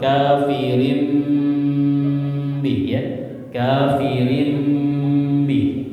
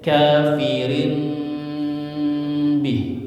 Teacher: tanwin tanwin bertemu huruf ba ba ya ada dua versi membaca iqlab ya pertama mulutnya ditutup semua kafirim bih ya kafirim bih ya kalau satu lagi ada celah dikit